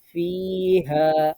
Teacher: ফি এক আলিফ টানতে হবে হা তিন আলিফ টানতে হবে